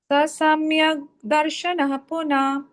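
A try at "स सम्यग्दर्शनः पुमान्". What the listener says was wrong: Darshana Puman. Ardha Visarga. Visarga followed by Pakara or Phakara. You don't pronounce that Visarga fully. The Ardha Visarga. Samyak Darshana Puman.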